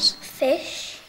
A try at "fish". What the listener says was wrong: He said Phil. Well, we're going to have to help him again. How should he say it? Fish.